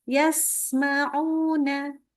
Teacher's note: minta di sinnya usahakan keluarkan betul-betul sifat safirnya